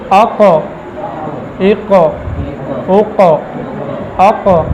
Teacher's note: حالت سکون میں حرکت ہو جاتی ہے، ٹھیک ہے، یہی قلقلہ ہے